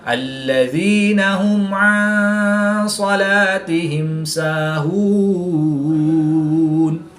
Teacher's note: میم ساکن کے بعد حرف با اور میم کے علاوہ حرف عین ہے، یہاں پر بھی میم ساکن کے بعد حرف با اور میم کے علاوہ حرف سین ہے تو ان دونوں میں اظہار شفوی ہوگا، یعنی غنہ نہیں کریں گے بلکہ میم ساکن کو ظاہر کر کے پڑھیں گے۔ وقف کی حالت میں یہاں پر مد عارض ہوگی، 2 سے 3 الف تک کھینچ کر پڑھیں گے